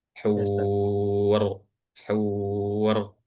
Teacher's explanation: ro yang seharusnya dibaca wakaf ini dibaca tebal. Jadi huruf ro tebal.